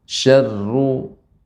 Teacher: ra tidak boleh syarru, akan tapi tipis, Nek. Tipis, ya. Kemudian getaran sedikit.